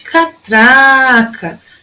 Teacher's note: Tem o som mais forte aqui, ó, no tra.